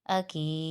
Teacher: حمزہ زبر آ، کاف یا زیر کی، اکی، دال پیش دو، اکیدو، اکید۔ یہاں پر دال پر قلقلہ ہوگا وقف کی صورت میں، کیونکہ یہ دال حروف قلقلہ میں سے ہے اور ساکن حالات میں ان حروف پر قلقلہ ہوتا ہے۔